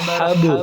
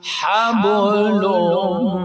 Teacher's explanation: اب با ساکن ہے تو ہا کو جب با کے ساتھ ملائیں گے قلقلہ بھی کریں گے